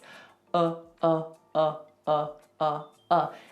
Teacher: it's just neutral nothing happens with the mouth nothing happens with the tongue